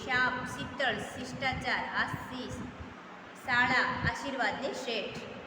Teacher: જીભનો વચ્ચેનો ભાગ ઉપરના તાળવાને અડાડીને શનું ઉચ્ચારણ કરવું જોઈએ. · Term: શરણાઈનો શ